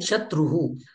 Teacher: विसर्गाचा ह सारखं उच्चारण करायचं आहे